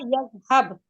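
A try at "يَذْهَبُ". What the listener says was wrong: यज़हब तो नहीं है। पेश है ना आखिर में।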